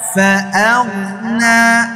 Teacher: গইন উচ্চারণ হবে হলকের শেষ থেকে, মানে জিহ্বার গোড়া থেকে। হ্যাঁ, জিহ্বার গোড়ার আগে যে আলা জিহ্বাটা আছে না, ওইদিকে এটা খালি উপরের দিকে উঠাই দিবেন।